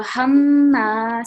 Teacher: This is the meme mushaddad, so we're pausing and producing slight nasal sound.